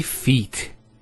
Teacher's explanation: We don't say fit, we say feet. There's an elongation of the E sound.